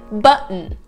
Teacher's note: It's when T is glottal. You don't really pronounce the T